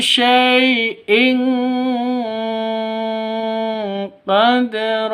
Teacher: cara bacanya sama didengungkan siap-siap ke huruf qof-nya dan tanwinnya ditambah dengan ng